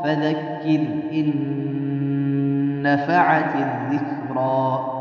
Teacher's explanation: را ساکن سے پہلے زیر، را کو باریک پڑھنا ہے